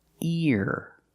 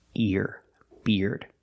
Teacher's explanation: e a r makes the ear sound like ear and he it's the long e sound e plus the r